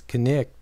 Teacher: the one-syllable word knight was pronounced in Old English with two syllables as knicht